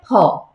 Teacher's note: বাংলাটা হচ্ছে ফ, ফটা জোর দিয়ে, ফটা দুইটা ঠোঁট লাগিয়ে করতে হবে